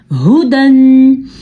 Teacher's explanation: ہا پیش ہو دال دو زبر دن ہو دن. یہ ہا چھاتی سے نکلتا ہے